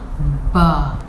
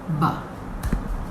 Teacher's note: Ba. Here both your lips come together. Close completely. Then ba. Open up. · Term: ba sound